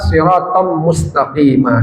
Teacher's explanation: tanwin yang bertemu mim idgham bi gunnah, dimasukkan tanwinnya ke mimnya lalu didengungkan